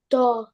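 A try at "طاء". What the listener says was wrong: আর একটু টেনে বলতে হবে।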